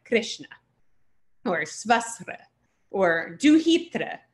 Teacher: So that R with the dot under it is pronounced sort of like an R-I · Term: vowel R